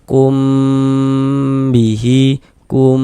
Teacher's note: Mimqun setelahnya huruf ba. Hukumnya ikhfa syafawi, maka dibaca dengan dengungan. Jadi di bagian kumnya itu suaranya itu kita tahan, kita panjangkan sejenak ya, kira-kira sepanjang dua harakat.